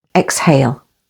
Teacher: say exhale with the stress on the second syllable